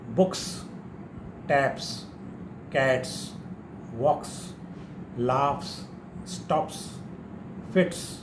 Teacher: it will sound as s sound after a voiceless consonant other than s, sh and ch.